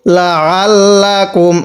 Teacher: আইনটা একটু চাপ দিয়ে পড়ব, কারণ অনেকে আমরা এই আইনগুলোকে হামজা পড়ি